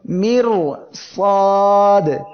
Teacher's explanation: জিব্বার আগার উল্টা পিঠ তার বরাবর উপরে তালুর সঙ্গে লাগিয়ে উচ্চারণের সময় আওয়াজটা একবারে বন্ধ হবে না আবার একেবারে জারিও সম্পূর্ণ থাকবে না। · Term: তাওয়াসসুত